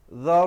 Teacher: ra di situ menjadi tebal